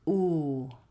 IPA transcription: u: